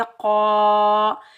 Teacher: खलीफ़ा, क़ाफ़ के ऊपर ज़बर, काफ़ को हम मोटा पढ़ेंगे, क़ाफ़ हरूफ मुस्ताइला में से है, आगे अलिफ खाली से पहले क़ाफ़ के ऊपर ज़बर है, ये अलिफ मद्दा है, इसको हम एक अलिफ की मिकदार खींच कर अदा करेंगे